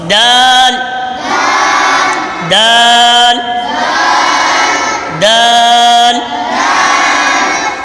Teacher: जबान की नोक और ऊपर के दांतों की जड़। जबान की नोक ऊपर के दांतों की जड़ से निकल लगती है तो फिर दाल अदा होता है।